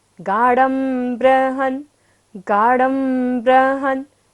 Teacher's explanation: बाद में क्या है, ब, तो बिंदी का उच्चारण यहाँ पर क्या होना है, म।